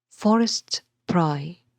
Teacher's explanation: one stressed syllable followed by two unstressed syllables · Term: dactylic foot